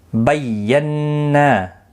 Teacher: تشدید والے حرف کو سختی کے ساتھ پڑھیں تاکہ تشدید ظاہر ہو، نون مشدد پر غنہ بھی ہوگا ، نا الف مدہ بھی ہے، ایک الف کی مقدار کے